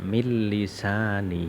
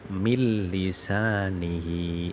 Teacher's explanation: Nun hilang seakan-akan ada tasjid nya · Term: idgham bilagunnah